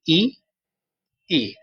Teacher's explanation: ई बोलने पर मुह खुलता ही नहीं है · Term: समृत